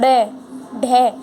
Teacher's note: जीभ को ऊपर उठाकर आगे की ओर फेंका जाता है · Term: उक्षिप्त व्यंजन